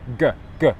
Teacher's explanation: it's a voiced sound so my voice box moves good good mmm my tongue is in exactly the same position